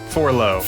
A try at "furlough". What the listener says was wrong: No, you're changing the second letter. It's furlough, like a fur coat.